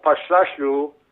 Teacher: you can sort of swallow that final syllable.